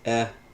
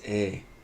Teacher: One is short, epsilon, the other is long, eta, and the very names of these letters, epsilon and eta, reflect the difference in this pronunciation, e versus a.